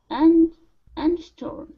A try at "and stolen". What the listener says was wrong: In between the D and the S, you had said eh. Okay, so yeah, remove that S sound. So and stolen.